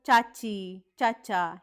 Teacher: च हे अल्पप्राण आहे आणि त्याचा प्रकार कोणता आहे तर त्याचा प्रकार आहे तालव्य